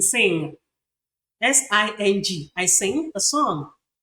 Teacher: You see that you can't hear the last sound, the g sound.